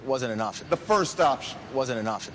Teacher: There's something about the way he cuts things off right at the end of a phrase, sort of lets you know that it's final and he's moving on to the next thing. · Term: closing it off